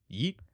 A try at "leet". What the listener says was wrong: leet, not yeet. Leet.